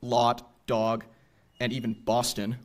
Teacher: we pronounce the vowel in words like lot dog and even Boston with a rounded sort of a sound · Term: rounded lot pronunciation